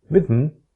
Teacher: However, if you say rhythm, the little line under n means that it is syllabic. The pronunciation moves directly from z to n. In this case, n is a syllabic consonant because it is a syllable, yet there is no vowel.